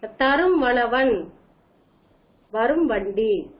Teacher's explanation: மகர குறுக்கமானது தன்னுடைய அரை மாத்திரை அளவிலிருந்து கால் மாத்திரை அளவாக ஒலிக்கும்